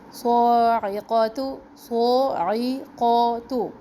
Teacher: تو موٹا حرف پھر باریک حرف پھر موٹا حرف پھر باریک حرف، تو زبان اوپر نیچے، وہ زبان کی جڑ اوپر نیچے